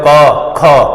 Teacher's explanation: બોલો ખ માં શું છે? હવા વાર આવે છે. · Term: મહાપ્રાણ